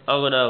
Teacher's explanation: اغنا غین موٹی ہے، نون پر کھڑی زبر ہے